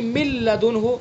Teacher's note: نون ساکن اور اس کے بعد لام آیا تو نون کی آواز بالکل ختم ہو گئی ، مِن لدنہ، من لدنہ ہے اصل، لیکن ادغام کیا تو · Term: ادغام تام